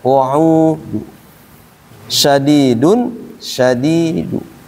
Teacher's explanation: tanwinnya ini tadi kita baca berubah menjadi dommah saat dibaca raum